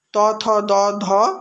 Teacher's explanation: যে ব্যঞ্জন ধ্বনিগুলি উচ্চারণের সময় জিভের ডগা উপরের দাঁত স্পর্শ করে এবং শ্বাসবায়ুকে বাধা দেয় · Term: দন্ত ব্যঞ্জন ধ্বনি